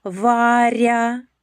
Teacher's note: М'який приголосний р перед буквою я.